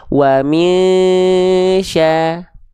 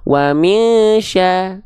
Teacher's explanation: Ya, contoh tadi di awal pagi udah kita bahas. Nun sukun ketemu shin diikhfakan kan, ikhfa hakiki kan, tahan dua harokat.